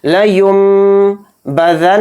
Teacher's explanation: نون کی آواز کو میم میں بدل دیں گے, یعنی نون کو سائلنٹ کر دیں گے اور میم پڑھیں گے. یہاں پر لیم لین نہیں پڑھا جائے گا, نون کے ساتھ نہیں پڑھنا ہے, اس کو میم کے ساتھ پڑھنا ہے.